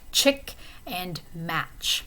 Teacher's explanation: ch would be a voiceless post-alveolar affricate